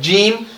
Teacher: جیم کو ہم نے ادا کرنا ہے زبان کے درمیان اور تالو کے درمیان والے حصے سے ہم نے ادا کرنا ہے